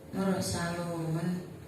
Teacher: Di situ ada mad yang bertemu dengan huruf yang diwakafkan, maka cara bacanya panjang. Panjangnya boleh 1, 2, 3 alif atau 2, 4, 6 harokat.